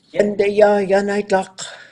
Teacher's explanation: And then this yun is low tone before a verb, but if the verb goes into a future mode, it changes to yunde and it goes high